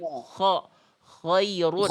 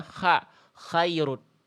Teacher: Jadi huruf K itu vokalnya sebenarnya huruf K ini vokalnya ee vokal A tapi vokal A-nya gemuk kayak vokal O karena pangkal lidah naik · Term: huruf tebal